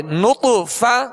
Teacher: طا پر قلقلہ کریں گے اور طا کو پر پڑھیں گے